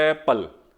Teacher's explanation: ਸਿੱਧੀ ਕੰਠ ਤੋਂ ਆਵਾਜ਼ ਆਉਂਦੀ ਹੈ, ਨਾ ਤੁਸੀਂ ਬੁੱਲ ਨਾ ਤੁਸੀਂ ਦੰਦ ਨਾ ਤੁਸੀਂ ਜੀਭ ਹਿਲਾਉਂਦੇ ਹੋ, ਸਰੀਰ ਵੀ ਨਹੀਂ ਹਿਲਾਉਂਦੇ।